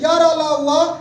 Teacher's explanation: इनका उच्चारण करते समय जीभ मुख के किसी भी भाग का पूरा स्पर्श नहीं करती है, इसलिए अंतस्थ व्यंजन कहलाता है।